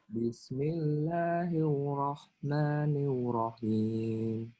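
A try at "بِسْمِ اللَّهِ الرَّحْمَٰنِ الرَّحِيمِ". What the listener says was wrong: Bismillahirrahmanirrahim tuh enggak ya. Jadi Bismillahirrahmanirrahim. Nirrahim. Jadi masih ada getaran-getaran di ro ya, ada takrir. Takrir. Getaran di huruf ro. Takrirnya dilihatin ya, meskipun nggak begitu jelas tapi kelihatan.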